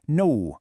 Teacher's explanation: We almost always tack on this invisible W or U sound at the end